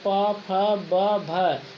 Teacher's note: दोनों ओठों का कॉम्बिनेशन बन रहा है, दोनों एक दूसरे के पास आ रहे हैं, तो यानी कि ओठों को प्रभावित कर रहा है। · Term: ओष्ठ व्यंजन